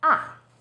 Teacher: fourth tone starts High then Falls sharply